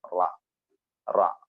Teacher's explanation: മേലെ മുൻപല്ലുകളുടെ മോണയില് നാവിന്റെ തലയുടെ തൊട്ട് പുറംഭാഗം ടച്ച് ചെയ്യുമ്പോൾ റ വരും